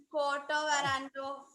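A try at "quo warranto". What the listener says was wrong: It is not a quota warrando, co warrando. co warrando.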